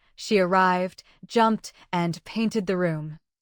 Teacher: Arrived ends with D, jumped ends with T, and painted ends with T. So, painted takes the extra ID syllable. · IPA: /ɪd/